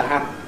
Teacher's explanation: There’s an effect at the end of the vowel as the lips move together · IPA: [hæp]